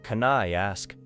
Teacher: The final N in can connects smoothly with the vowel sound in I. Then I flows directly into ask. The first part may sound almost like one word.